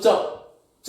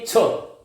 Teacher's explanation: फिर इसी प्रकार देखो, बोलो च में नहीं आई, छ में आपको एकदम श्वास का बल लगेगा, यहां पर हाथ पर आपको उसको अनुभव करें